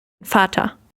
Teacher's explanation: It's an open R kind of sound. So yes, and very much unstressed. Vater. Is it similar to sister?